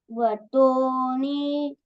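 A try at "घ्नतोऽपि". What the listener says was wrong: Say gha. When you say gha, you are adding a over there. Before a, you add n and say gna. Gnato madhusudana.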